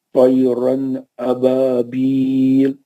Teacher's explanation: तनवीन के बाद حرف हल्की में से हमजा आ रहा है, इसलिए नून को जाहिर करके जल्दी पढ़ेंगे